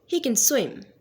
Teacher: the main focus is on swim, not on he. So he is a weak form, so we are going to use a small e.